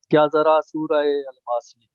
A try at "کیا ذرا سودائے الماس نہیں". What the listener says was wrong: دال ہے یہ سودائے. جی سودائے.